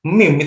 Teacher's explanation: syafatain artinya dia keluar dari dua bibir